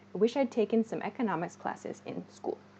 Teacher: this i had in particular is reduced to i'd